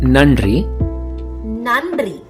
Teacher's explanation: - if you take the word nandri nandri meaning thank you the first n is normal you make the sound by touching the teeth but while making the second sound nn your tongue should be little back